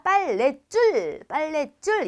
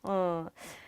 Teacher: 빨래줄이 아니라 얘는 사이소리 현상이 나서 된 소리가 됩니다